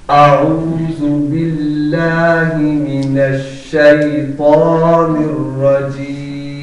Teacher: اعوذ میں حمزہ کی آواز الگ ہو اور عین کی آواز الگ ہو. گویا ایسے نہ پڑھا جائے اعوذ یعنی اس کو ملا کے نہ پڑھا جائے بلکہ الگ الگ آواز آئے.